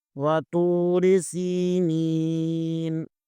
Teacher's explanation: تو کو پر پڑھیں گے کیونکہ تو حروف مستعلیہ میں سے ہے · واتوری سی نون کے نیچے زیر ہے، نون زیر کے آگے یائی مدہ ہے، اسے بھی ایک الف کے برابر کھینچیں گے